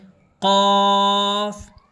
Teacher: تو اس کو حلق سے نکالیں گے قاف